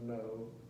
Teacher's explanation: the air will come through your nose on the consonant